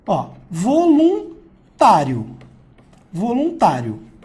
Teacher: sai numa única emissão vocal, que é a característica do ditongo